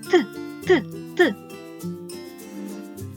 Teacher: руку на горлечко і вимивте звук т чи тремтить воно ні наше горлечко не тремтить голос не працює Тому звук т називають глухим · наші губи злегко розтягнуті в посмішці між зубами є невеличка щілина кінчик язика протиснутий до верхніх зубів перешкоджаючи виходу повітрю що виходить з ротика потім ця Змичка розривається і повітря виходить